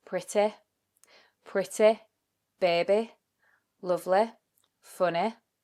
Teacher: Next feature we're going to look at is the Y ending words, which in a more southern accent or a standard southern British accent, they would often sound more like an E, pretty, baby, lovely, funny. But these actually become more of an I sound on the end.